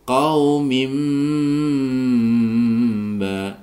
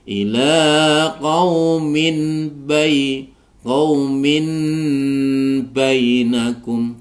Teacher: Qa ini isti'la tebal karena berharokat fathah, qaf berharokat fathah. Qaumim ba, di sini ada tanwin kasrotain bertemu dengan ba dibaca iqlab. Sehingga bacaan mimnya berubah menjadi dibaca didengungkan ya. Di sini dibacanya menjadi qaumim bainakum ya.